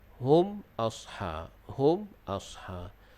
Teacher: Kemudian hum, mim mati yang di atasnya ada sukun, hukumnya izhar syafawi, bacaannya jelas dan nyata. Yakni kita jelaskan bunyi mim mati dengan cara merapatkan bibir.